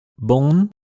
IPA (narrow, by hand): bɔ̃n